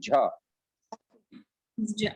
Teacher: ज ओके, ज ज य, ज झ य, जैसे झारखंड बोलते हैं ना झ, ओके, झ वो महाप्राण वर्ण है, उसमें हवा ज्यादा लगेगी।